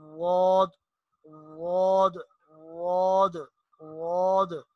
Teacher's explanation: زبان کا جو کنارہ ہے، یہ جب اوپر والی 5 داڑوں کے ساتھ بائیں طرف والی 5 داڑوں کے ساتھ لگے گی تو اس سے ضاد ادا ہوتا ہے